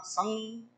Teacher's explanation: अभी स के ऊपर अनुस्वार है तो उसका नासिका में उच्चारण होगा